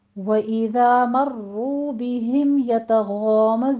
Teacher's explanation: वइज़ा में दाल को नरमी से पढ़ते हुए आके अलिफ मद्दा अदा कीजिए, 2 काउंट करना है।